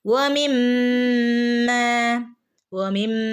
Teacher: മീമിന്റെ മുകളിൽ ശ്രദ്ധയുണ്ട് കൂടെ തന്നെ മദ്ദും വന്നിട്ടുണ്ട് അപ്പൊ നമ്മൾ അവിടെ രണ്ട് അനക്കം നീട്ടുകയും വേണം മീമിനെ നന്നായിട്ട് കനപ്പിക്കുകയും വേണം